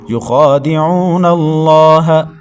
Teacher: لفظ اللہ سے پہلے نون کے اوپر زبر ہے تو لفظ اللہ کو پر پڑھیں گے